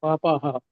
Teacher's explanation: ಪಾಪಾಂ ಅಲ್ಲ ಪ್ರಭುಜಿ, ಅದು ಪಾಪಾಹ ಆಗುತ್ತೆ. ವಿಸರ್ಗ ಇದೆಯಲ್ಲ ಅಲ್ಲಿ.